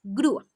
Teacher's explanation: una vocal cerrada tónica y una vocal abierta atona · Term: hiato